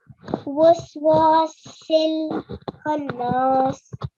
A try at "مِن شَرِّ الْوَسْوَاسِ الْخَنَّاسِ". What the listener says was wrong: Yeah, so it's not min. What you have to do if Nun Sakin is followed by this sheen letter here, min sharril, nasal sound. You have to put a nasal sound in. Min sharril. It will be min sharril waswasil khannas. Waswasil.